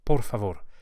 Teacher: is por favor por favor each of the ARS is likely flipped with the very tip of the tongue